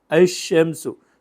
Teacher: So we are exactly dismantling something like the shadda. But here the lam, when it has a shamsiyah, the letter after it, next to it, converts exactly to a letter with a shadda. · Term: assimilated